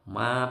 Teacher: Ma panjang 5 harokat 5 ketukan. Karena ketemu alif ini, jadi ada tanda layar.